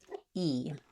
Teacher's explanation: This is called a high front vowel. When I say E, my tongue fills up most of the space in my mouth, and this is a vowel that's in most native languages. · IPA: /i/